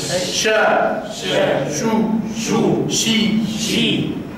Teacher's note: الجيم والشين والياء مخرج واحد من وسط اللسان مع وسط الحنك الاعلى